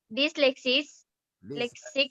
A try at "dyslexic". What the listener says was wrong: হ্যাঁ, হয়েছে।